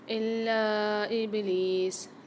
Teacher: لام کے اوپر مشدد بھی آ رہی ہے، اس کو سختی اور جماؤ کے ساتھ پڑھیں گے لام کو، اور الف مدہ بھی آ رہا ہے اور مد بھی آ رہا ہے تو یہاں پر ہم کھینچ کے بھی پڑھیں گے اس کو، یعنی سختی اور جماؤ کے ساتھ بھی پڑھیں گے اور کھینچ کے بھی پڑھیں گے۔